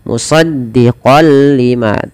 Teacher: masuk tanwinnya kepada lam, nunnya hilang. Musaddiqal lima tanpa ditahan. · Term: idgham bila gunnah